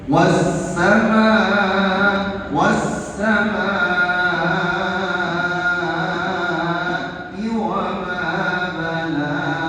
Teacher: Apalagi ini mad wajib ya. Mad wajib. Tidak boleh kurang dan tidak boleh lebih harkatnya. Harus lima harkat. · wasama di situ ada hukum mad wajib panjang harakatnya itu sekitar lima harakat ya